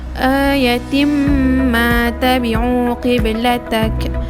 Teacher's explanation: Seterusnya terdapat juga idgham ma'al khunnah di sini apabila tanwin bertemu dengan mim. Jadi cara bacaannya ialah perlu didengungkan 2 harakat.